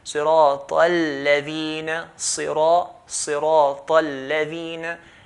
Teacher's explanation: So sirata al-ladhina, lam has a shadda. Okay, when lam has a shadda, we're going to hold the lam.